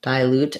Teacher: and then dilute would be stress on the eye dilute actually it would be just secondary stress on the eye and main stress still on loot